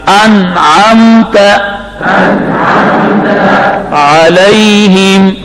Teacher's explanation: آج آپ کی آواز صحیح نکل رہی ہے، عین درمیان حلق میں